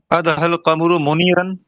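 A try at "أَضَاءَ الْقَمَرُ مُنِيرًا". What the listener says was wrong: मुनीरन, बहुत बढ़िया।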